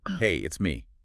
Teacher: It specifically notes that the pitch isn't flat. It goes up slightly on hey, and then it comes down at the end on me. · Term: Intonation